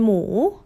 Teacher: rising, dipping then lifting like a question.